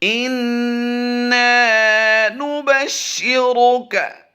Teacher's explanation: काफ बारीक है, क्या कौ नहीं करना